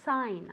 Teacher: i don't want to hear that g anywhere okay it's silent totally silent really we say sign as if it were s-a-i-n sign okay